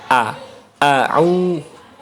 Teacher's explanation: hamzah itu terdengar lebih tebal dibanding dengan a dalam bahasa Indonesia. Kalau hamzah itu lebih tebal au kayak gitu.